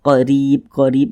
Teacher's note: huruf ro yang memiliki tanda baca kasrah dibaca tipis dibaca tarkik sehingga pangkal lisan kita itu tidak tidak tidak terangkat ke atas